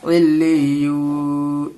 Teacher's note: اب لام یا زیر لی، لی، یا واو پیش یو، واو کے اوپر جزم ہے، واو ساکن ہے۔ واو ساکن سے پہلے اگر پیش آتا ہے تو اس کو ایک الف کے برابر کھینچ کے پڑھیں گے